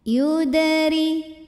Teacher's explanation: Huruf ra dibunyikan secara tarqiq sebab barisnya di bawah kasroh, maka cara bacanya tipis.